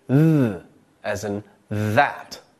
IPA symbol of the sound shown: ð